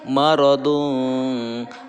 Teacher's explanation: Nah, ikhfa marodung, membacanya itu ada dengungannya ya, ikhfa. Tetapi dengungnya itu samar-samar ya, samar antara ikhfa dan idgham.